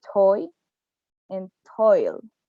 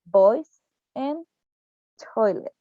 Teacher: For the following example of the diphthong oi, we have that this diphthong is wide and front closing. For the fully long case, we have the toy and toil.